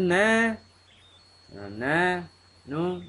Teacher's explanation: makhraj dia, ujung lidah dia gusi. Sifat dia tak wangi.